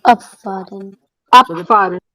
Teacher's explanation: या P सुनाई देता है ना? So that B is pronounced as P, abfahren.